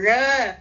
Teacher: இந்த நுனி நாக்கை வளைத்து மேல் அன்னத்தில் தொட்டு பேசக்கூடிய ழகரம்